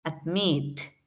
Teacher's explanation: una pequeña montañita rusa cierto y miremos la palabra admit admit la acentuación está la parte más larga digámoslo así está al final de la palabra · Admit. La acentuación está, pues, la parte más larga, digámoslo así, está al final de la palabra. Entonces, y además cumple con la regla consonante, vocal, consonante.